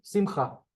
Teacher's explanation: There's the emphasis in the word is on the cha, which is why we get the kamatz rather than the other one.